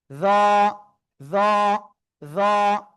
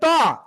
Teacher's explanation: জিহ্বার আগা, উপরে দুই দাঁতের আগে লাগান, লাগিয়ে একটু মোটা আওয়াজে আপনারা উচ্চারণ করবেন।